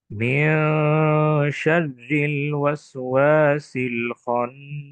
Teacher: এখানে আল ওয়াসওয়াসি, সিন এবং ওয়াও হরফের মধ্যে হামস রয়েছে। বিশেষ করে সিন হরফের মধ্যে হামস রয়েছে।